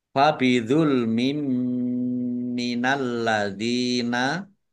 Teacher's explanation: Fabidul mim minal ladzina, kasrah tanwin bertemu dengan huruf mim, bacaan idgham bi gunnah, masuk dengan mendengung, yaitu mendengung mim ditandai mimnya ada tasdidnya. Ditahan mimnya agar tampak dengungannya.